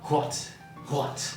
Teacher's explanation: it's quite common in Scottish, is the voiceless WH sound